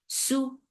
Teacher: For dhamma circle lips, make it short.